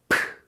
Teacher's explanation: 그래서 소리가 바람이 많이 나가죠. 그래서 H음이 섞인 강한 소리입니다. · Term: 피읍 발음